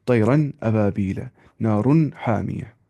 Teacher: हमने कहा था इजहार का मतलब होता है आवाज़ को जाहिर कर देना, नून की आवाज़ को बिल्कुल जाहिर करके पढ़ना। यहाँ पे नून की आवाज़ को नाक में नहीं छुपाना होता है, बल्कि बिल्कुल जाहिर करके पढ़ना होता है नून की आवाज़ को। · गुन्ना नहीं करना है वहाँ पे, गुन्ना वहाँ पे नहीं करना है, यानी कि नाक में आवाज़ नहीं छुपानी है